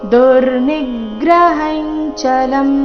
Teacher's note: ದುರ್ನಿಗ್ರಹ, ಇಲ್ಲಿ ನೀ ಮೇಲೆ ಆಘಾತ ಬರಬೇಕು. ದುರ್ನಿಗ್ರಹಂ ಚಲಂ.